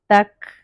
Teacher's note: اور یہ جو ایسے ساؤنڈ ہے اس کو ہمس کہتے ہیں، تو کاف کے سکون میں تھوڑا سا ہمس ہوتا ہے